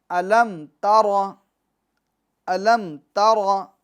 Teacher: تو تر میں جو را ہے اس کو ہم کیا کریں گے؟ پور یعنی موٹا پڑھیں گے۔ کیوں؟ کہ را پر زبر ہے، اور قاعدہ ہم پڑھ کر آئے ہیں کہ را پر زبر یا پیش ہو، 2 زبر 2 پیش ہو، کھڑی حرکات ہو یعنی کھڑا زبر ہو، تو را کو ہم کیا کریں گے؟